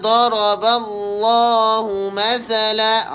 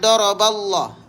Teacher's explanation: Maka lafzul jalalah dibaca dengan tebal.